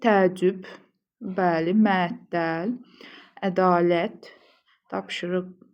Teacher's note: Hər birində vurğu son hecaya düşür.